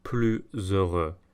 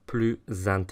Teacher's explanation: the s sounds more like a Z than an S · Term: liaised